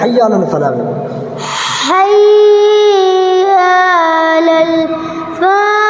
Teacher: आखिर में बड़ी हा निकालना है